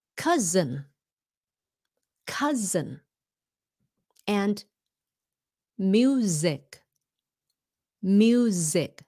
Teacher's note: pronounce the S like a z when the S is in between two vowels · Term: z sound